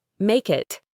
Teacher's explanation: The next two words, make it, link together beautifully. The K sound at the end of make connects to the I in it. It sounds like make it.